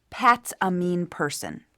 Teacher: That's an assertive, definitive statement. Note the downward inflection.